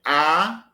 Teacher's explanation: se eu digo A, ele é oral, o véu palatino fica levantado